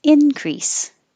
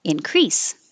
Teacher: this word can be a noun with stress on the first syllable increase or verb with stress on the second syllable increase